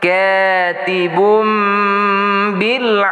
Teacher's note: tanwin di hadapan ba bertemu dengan ba hukumnya iqlab berdengung